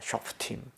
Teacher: 쇼페트에 있는 요 장모음을 없애고 쇼프팀으로 바뀌는 겁니다.